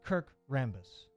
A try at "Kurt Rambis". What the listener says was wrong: Kurt Rambis. Kurt. Kurt. Kurt. With a T. Kurt. It's not Kirk. It's Kurt.